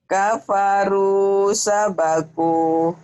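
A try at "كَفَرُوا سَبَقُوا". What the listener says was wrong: Tapi jangan ada sabakuh ya, Bu ya, jangan ada hanya. Kafaru sabaku kayak ada ka ujungnya. Di rem.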